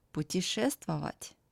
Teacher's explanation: T becomes soft before soft sign.